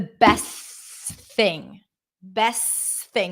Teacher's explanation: I can drop the T because it's between two consonants when I connect two words together it's the best thing best